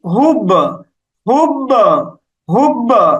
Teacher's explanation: এই বায়ের উপর আমরা একটা ধাক্কা দিচ্ছি, এটা হচ্ছে কলকলা